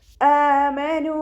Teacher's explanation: അസൽ ഹൽക്കിൽ നിന്നാണ് ഹംസ വരുന്നത് അപ്പോ അതിന്റെ സൗണ്ട് ക്ലിയർ ആക്കുക നൂനിന് ശ്രദ്ധ വന്നിട്ടുണ്ട് അപ്പോ നല്ലോണം മണിച്ചിട്ട്